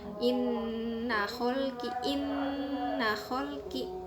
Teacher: harus berhenti dulu, harus didengungin dulu lama, 2 ketukan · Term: gunnah